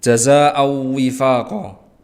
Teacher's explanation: Jazaan itu adalah mat wajib muttasil, karena ada mat tabi'i yang bertemu dengan hamzah dalam satu kalimat, maka bacaan ini harus dibaca setidaknya 5 harokat